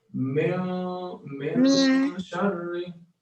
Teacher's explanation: It's as if the noon is hiding back in my mouth to say I don't want to go out. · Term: ikhfa hiding